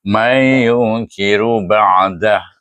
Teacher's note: huruf ya tu dia bukan huruf dengung tapi dibaca dengung pada huruf ya, sebab itu dipanggil idgham yang tidak sempurna.